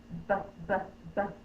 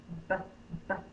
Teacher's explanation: the drip bubble comes first and then the line BB B my lips are closed and then I'm popping the air BB so on the line think about it being closed lips